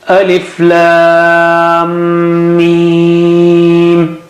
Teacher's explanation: Mim has shadda there, so you got to stretch at that merger point twice with Gunna.